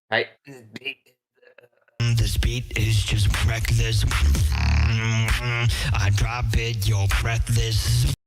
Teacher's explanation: he's actually kind of like moving the false folds kind of in and out a little bit to get a little bit of a different sound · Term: really raspy sound